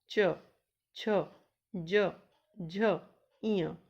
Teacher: जब हम इन्हें बोलते हैं तो हमारी जो जिह्वा है वो कहाँ पे? तालु पे स्पर्श करती है, इसीलिए इनको तालु वर्ग में रखा गया।